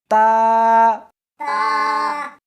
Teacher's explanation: اس حرف کو زبان کے اوپر کے تالو سے ملا کر پڑھیں گے